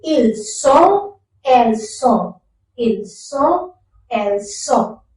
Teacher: Ils sont, elles sont. So again, T is completely omitted and N is taking the nasal sound again